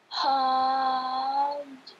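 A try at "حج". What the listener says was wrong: Kol-kolanya jelaskan. Jelaskan kol-kolanya aja gitu. Haj. Tahib, latihan kol-kola ya. Latihan kol-kola. Bacanya sudah betul, tinggal kol-kolanya dilatihkan.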